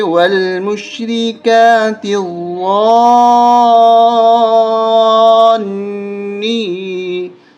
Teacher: ضا کے اوپر تشدید اور اس کے ساتھ الف اور مد، ضا پہ سختی کرتے ہوئے کھینچنا بھی ہے اور پھر اگلے نون کے ساتھ ملانا بھی ہے جس نون کے اوپر تشدید ہے